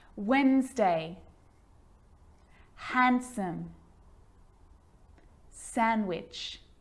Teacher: So I'm not pronouncing the D in sandwich. I'm just pronouncing the consonant N sound before it.